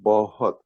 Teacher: it starts with the B. Then we have the H sound. And then we have the soft T sound.